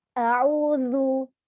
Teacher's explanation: pengucapan makhraj zu itu ujung lidah kita ditempelkan pada ujung gigi tengah atas kita. Nah, jadi ini ujung lidah, ini gigi kita tempelkan.